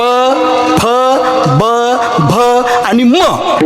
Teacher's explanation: माझ पण ते त्यांच जास्त माझ्या उष्ट स्थान आहे प फ ब भ आणि म बघा हे पाच अक्षर ओटाला ओट लागल्याशिवाय म्हणता येत नाहीत